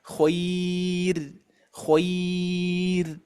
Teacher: sebelum ro itu huruf Lin karena sebelumnya fathah maka ini dibaca tipis